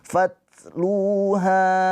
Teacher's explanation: Lu mad thobi'i ya panjang dua harakat karena wau sukun sebelumnya harakatnya dam dommah. Lunya dibaca panjang dua harakat. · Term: mad tabi'i